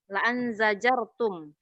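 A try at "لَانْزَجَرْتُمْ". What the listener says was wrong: bukan la'an jazar. Enggak, bukan la'an. Lan jazartum. Di sana asarnya la, kemudian in jazartum.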